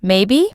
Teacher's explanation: If they're unsure, the voice goes up at the end. Maybe? When someone's certain, their voice stays flat and low.